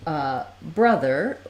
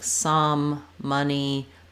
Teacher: in the word uh brother the letter O says the vowel schwa the stress schwa